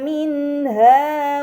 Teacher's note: Pada kata minha terdapat nun sukun bertemu dengan huruf ha. Ini dinamakan izhar halqi, maka nun sukun dibaca secara jelas.